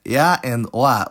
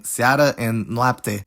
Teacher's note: Romanian has two opening diphthongs that start with a mid vowel, rather than a close one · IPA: [e̯a] and [o̯a]